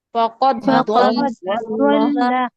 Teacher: فقد کا دال ڈراپ ہو جائے گا. فقد ضل ڈائریکٹ ضاد پڑیں گے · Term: ادغام